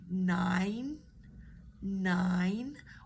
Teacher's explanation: up there and if it helps practice words like nine nine where the tongue starts up there goes down comes back up